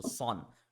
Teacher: The Sod is a heavy letter and it has to have the aw sound.